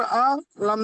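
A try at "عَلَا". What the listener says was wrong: আলা, আইন একটু বড় করে আলা গলা থেকে।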